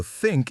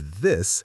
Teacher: So think is breathier and this has a buzz to it. People should try saying both words slowly and feel the difference in their throat and tongue.